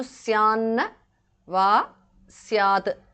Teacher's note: And the th in the end changes to n because of sandhi.